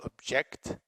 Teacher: This is weak, not stressed. This primary stress on the second syllable.